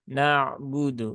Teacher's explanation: huruf ain ini seringkali memang berubah menjadi hamzah